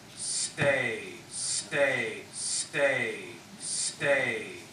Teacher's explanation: what you've all done is you've all dropped a consonant in there and the consonant you've dropped in is a stop consonant a p or a t a stop consonant is a consonant where you stop